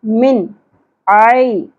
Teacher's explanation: आइन को बारीकी से अदा करेंगे वैसे हलक में से